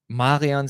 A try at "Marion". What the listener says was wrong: Wait, how did you pronounce her name? Marion. You don't see the N? Marion. It sounds Italian to me. Marion. Marion.